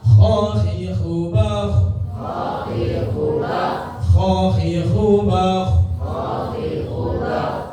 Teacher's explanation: Itu adalah huruf-huruf isti'la, ya, dibaca tafkhim atau tebal istilahnya.